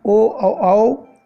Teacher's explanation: फिर कंठ और ओष्ठ के बीच से निकलने वाले वर्ण ओ और औ इन्हें कंठोष्ठय वर्ण कहते हैं